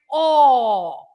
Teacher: the other accent, which is acento agudo, gives you an open vowel. So you open your vowel and you say O.